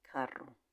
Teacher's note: The sound of the R in the middle of two vowels is strong.